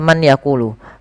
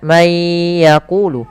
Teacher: Asal dasarnya adalah man yaqulu. Karena dia bertemu dengan ya, suara nunnya hilang, suara n-nya hilang, maka menjadi langsung ke ya. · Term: idgham bil gunnah